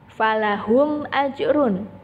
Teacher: Dibaca izhar syafawi jelas karena ada huruf mim sukun bertemu dengan huruf alif.